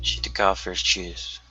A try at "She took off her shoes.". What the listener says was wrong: Great. Nice skip on took. Yeah, took off.